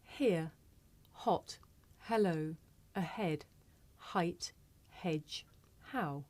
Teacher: This is a voiceless consonant. It makes very little sound because it's really just your breath. You can hear it at the beginning of the word here.